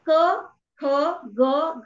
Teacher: हे सगळे जेव्हा वर्ण तुम्ही उच्चाराल तेव्हा तुमच्या लक्षात येईल की हे सगळे जे वर्ण आहेत ते कंठातनं उच्चारले जात आहेत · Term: क वर्ग